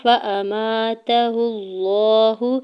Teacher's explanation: ہا کی پیش کو لام جلالہ کے ساتھ ملاتے ہوئے پڑھنا ہے اور لام جلالہ کے اوپر کھڑی زبر ہے، دو حرکت کھینچ کے ادا کریں گے۔